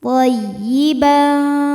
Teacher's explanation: Masuk ke ya ini tidak perlu ditahan ya, cukup bunyikan dengan nabar ya, agak ditinggikan intonasinya